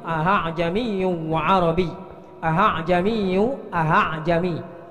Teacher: Itu namanya tashil. Jadi membaca hamzah yang kedua dengan bacaan yang ringan